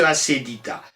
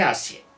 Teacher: Le E devient ye. On dit dans ce cas-là qu'il se diphtongue.